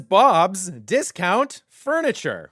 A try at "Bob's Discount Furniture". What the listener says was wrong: You're putting the emphasis on the wrong syllable.